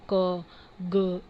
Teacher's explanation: जो पीछे का हमारा जो सॉफ्ट पार्ट है, जो हमारे सॉफ्ट प्लेट है उससे टंग अटैच्ड हो रहा है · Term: वेलर्स